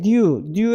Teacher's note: new 할 때 펠라탈 글라이드 사운드가 나타났죠